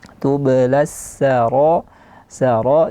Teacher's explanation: jangan diganti menjadi tebal sinnya sho tapi tetap dijaga secara tipis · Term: huruf Sin